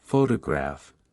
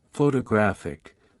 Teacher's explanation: in the word photograph, the stress is on the first syllable, while in photographic, the stress shifts to the third syllable